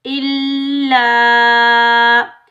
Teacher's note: الف مدہ کو بھی ایک الف کی مقدار میں کھینچ کر ادا کریں گے